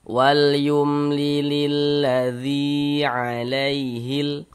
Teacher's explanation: Sebelum huruf ya sukun ini ada huruf yang memiliki harokat kasroh, maka huruf yang memiliki harokat kasroh ini baca panjang. Sehingga dzi kita baca panjang. Mad tabi'i panjang 2 harokat. 2 harokat untuk mempermudah kita dalam belajar, kira-kira sepanjang 2 ketukan.